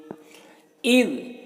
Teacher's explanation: یہ ذال کو باریک پڑھنا ہے اور ذال میں قلقلہ نہ ہونے پائے